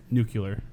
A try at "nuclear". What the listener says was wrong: Oh, it's not. There's no U. There's no second U. It's nuclear. No,